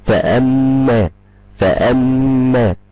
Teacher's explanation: ميم مشدده ميم عليها شده يبقى تغن بمقدار حركتين